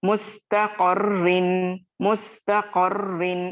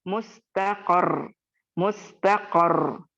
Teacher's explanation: रॉ को थोड़ा शद्दा के लेटर को स्ट्रेस करते हुए, साकिन देते हुए स्टॉप करेंगे। लेकिन इसमें भी क्या ख्याल रखना है आपको और मुझे, नून मुशद्दद और मीम मुशद्दद पर वक्फ की सूरत में गुन्ना होगा, नब्र नहीं होगा।